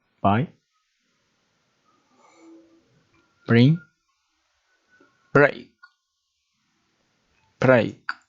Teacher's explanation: The sound of the consonant B. The sound of the consonant B when it is at the beginning of a word which the vocal cords resonate.